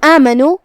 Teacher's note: کلمت آمنو، یہاں الف ہے اور اس کے بعد چھوٹا سا مد ہے. یہاں مد طبیعی ہے، ہم اپنی آواز 2 مد کے برابر لمبی کریں گے